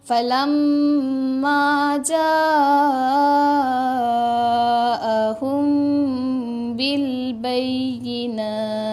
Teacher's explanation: Anginkan sikit huruf ta.